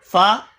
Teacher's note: نچلے ہونٹ کا اندرونی حصہ جب سامنے کے اوپری 2 دانتوں کے کنارے سے ملتا ہے تب ادا ہوتا ہے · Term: حروف شفویہ